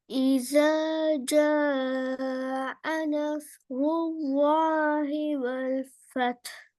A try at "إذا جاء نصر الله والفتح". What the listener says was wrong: இந்த இடத்துல நீங்க ஐனை உச்சரிக்கிறீங்க, அலிஃப் வருது இல்லையே. நாக்கு தூக்குப்படுது தொண்டை போதி. அ அ அனஸ் அனஸ் சவுண்ட் வரணும். உங்களோட உச்சரிப்புல நீங்க ஓதினத்துல சவுண்ட் வரல.